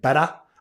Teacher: the Aussies do the T transition to D, but they have the weak R